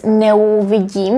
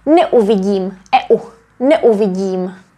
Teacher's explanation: We don't pronounce the diphthong eu. But because these two are prefixes, neu, we have to separate them.